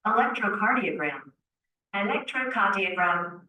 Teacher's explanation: the r disappears there is no R